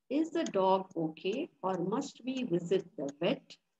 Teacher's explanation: alternative questions have a fall in the intonation